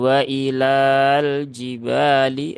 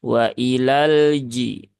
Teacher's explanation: lafaz kedua ini juga sama ya Ada Lam takrif lagi Ya Nah maka lamnya tidak dibaca panjang ya Bukan wailal jibali ah enggak begitu tetapi langsung ke lam yang